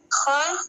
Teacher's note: خا کو حلق کے آخری حصے سے ادا کیا جاتا ہے، خا کو تھوڑا موٹی آواز سے پڑھا جاتا ہے